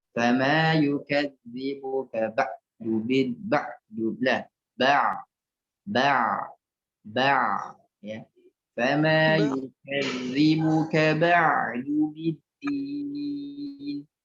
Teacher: ain jangan dikuatkan karena ain bukan huruf syiddah. Ain itu hurufnya tawassut.